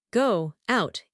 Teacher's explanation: If I try to say go out without the W, I have to stop completely.